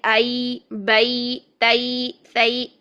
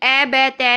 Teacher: इसी तरह लीन के कायदे में भी हम क्या करते हैं कि या की तरफ मोड़ पैदा करते हैं, जबर अदा करते हुए या की तरफ मोड़ पैदा करते हैं।